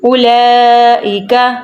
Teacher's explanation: اولئک یہ مد ہے اس لیے لام کو ہم نے لمبا کیا ہے